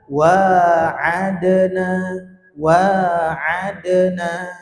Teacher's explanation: itu memantulnya alami ya itu huruf Dal ketika kita qalqalahkan